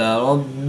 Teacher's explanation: با مشدد ہے تو یہاں پر قلقلہ کبرا کر کے پڑھیں گے